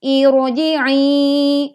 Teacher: kita bacanya ro-nya tetap tebal karena ini ada hamzah wasol. Sekalipun hamzah wasolnya berbunyi i, ya, begitu.